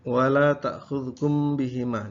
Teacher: Kemudian wala ta'khudhukum bihima, di sini ada mim sukun bertemu dengan ba, ikhfa syafawi